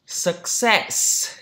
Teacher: Success, trọng âm thứ hai đúng không? Suck, không có sắc đâu nhé.